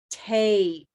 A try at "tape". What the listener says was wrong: I think you're pronouncing it with a red sound, but you need to use a gray sound.